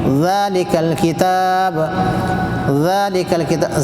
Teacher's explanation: بغیر سٹی کے، اس میں سٹی ہوگا ہی نہیں